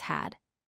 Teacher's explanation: There's no vibration. In had, the D at the end creates that buzzing sound we learned about.